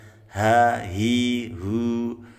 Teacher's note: haknya di tekan suaranya dari pangkal tenggorokan atau tenggorokan paling bawah. Hu, bukan di dada ya.